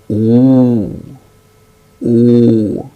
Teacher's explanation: when we utter oo, oo, that is the back portion of the tongue goes up